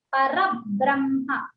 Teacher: రా తర్వాత బ్రా ఉంది కాబట్టి అది సంయుక్తాక్షరం కాబట్టి రబ్ బ్రహ్మ అనాలి